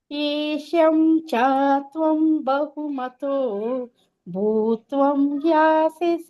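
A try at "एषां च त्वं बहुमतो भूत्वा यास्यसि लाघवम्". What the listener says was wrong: ಏಶಾಂ ದೀರ್ಘ ಇದೆ ಶಂ ಏಶಾಂ ಭೂತ್ವಂ ಅಲ್ಲ ಭೂತ್ವ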